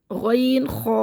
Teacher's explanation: غین خو منہ کے شروع حلق سے پڑھیں گے